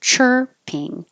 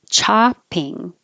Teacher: So chirping, chirping. Chopping, you open more for the chopping.